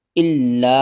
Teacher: لام کو 2 بار پڑھیں گے، سختی کے ساتھ پڑھیں گے ، اس لام کو اس الف کے ساتھ ملائیں گے، الف · الف کے اوپر دیکھیں مد ہے، 3 الف کے برابر کھینچ کر پڑھیں گے